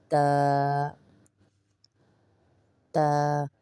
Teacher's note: ऊपर के दांतों की पिछली साइड से जबान लगेगी · اوپر کے دانتوں کی پچھلی سائڈ سے زبان لگے گی اوپر کے.